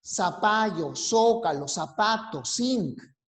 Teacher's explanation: Pues bien, este sonido nosotros aquí en el Perú no lo usamos, no lo producimos. Una característica dialectal de nosotros es el ceseo. O sea, todo lo pronunciamos como si fuera S.